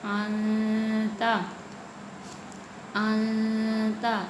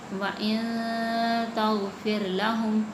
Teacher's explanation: اسی طرح لفظ ہے وَإِن تَغْفِرْ لَهُمْ، وَإِن تَغْفِرْ لَهُمْ، نون ساکن کے بعد تا آ رہی ہے تو یہاں پہ بھی ہم اخفاء کریں گے، ناک میں آواز کو چھپائیں گے